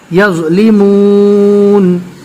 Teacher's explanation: زو میں ہلکی سی زا جیسی آواز آتی ہے